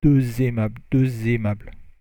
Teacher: So the X becomes like a Z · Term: liaison